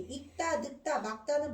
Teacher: 익다 늙다 막다는 모두 된 소리 되기가 일어나.